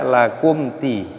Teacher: mim sukun bertemu dengan huruf dal, ini hukumnya dibaca idhar syafawi. Jadi dibaca jelas, jangan didengungkan.